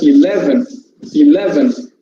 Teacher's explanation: stress falls on the second syllable